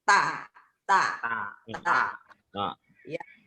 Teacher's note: Ingat, ta itu digigit di ujung gigi ya, lidahnya.